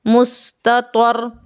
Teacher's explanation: मैं रा को मोटे अक्षरों में पढ़ता हूँ क्योंकि साकिन रा से पहले एक फाथा है